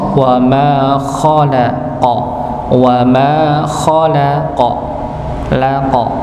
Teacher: Jadi huruf kha dan qaf dibaca tebal, nggih, dibaca tebal.